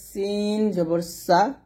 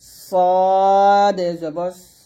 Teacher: সিনটা হবে পাতলা আর সদ হবে মোটা